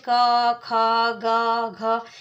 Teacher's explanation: इनमें से किसी का भी हम उच्चारण करेंगे तो क या ख, इनके सबके साथ पीछे अ की साउंड आती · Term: व्यंजन